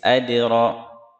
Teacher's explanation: Adra, ro tebal ya. Adra tebal dan getarannya lembut.